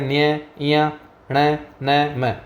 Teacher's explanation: ये सब नाक से निकलने वाले वर्ण है इसलिए इन्हें नासिक्य वर्ण कहा जाता है।